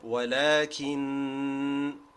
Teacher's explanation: we have to do that additional timing to indicate that there was another noon or meme which was omitted. If you don't do this extra timing, then you are stealing one of the letters from the word. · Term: longest type of ghunna